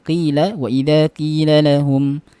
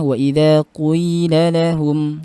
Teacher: membaca lafaz qila dengan ismam, ya, ismam pada qafnya. Jadi kalau kita bacanya qila wa idza qila lahum, Ibnu Amir membacanya wa idza qila lahum.